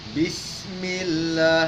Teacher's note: matikan sinnya dengan menampakkan sifat hurufnya namanya as-safir yang maknanya berdesis